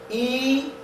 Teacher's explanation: E is long and close to the roof of the mouth.